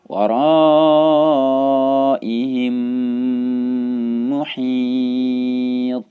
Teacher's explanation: Mim yang pertama langsung masuk ke dalam mim yang kedua sehingga yang terdengar gunnahnya saja, gunnah mim yang bertasydid sehingga dibaca panjang.